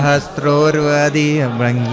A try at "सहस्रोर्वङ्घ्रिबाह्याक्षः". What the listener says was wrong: अरे अधि नहीं है भाई, सहस्रोर्वङ्घ्रिबाह्याक्षः सहस्रानन शीर्षवान्.